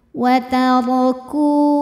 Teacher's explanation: Wataraku, ku matobi'i zahiri sebab ada waw sukun didahului harokat dhammah, maka kafnya panjang 2 harokat.